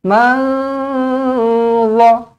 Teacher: Yang bertanya tadi, ini ikhfa' hakiki lah. Nun kosong bertemu dengan za, sembunyikan huruf nun, samar-samarkan.